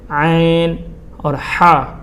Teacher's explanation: یہ حلق کے درمیانی حصے سے ادا ہوتا ہے۔ وسط حلق سے یہ دونوں حرف کی ادائیگی ہوتی ہے، عین اور ہا۔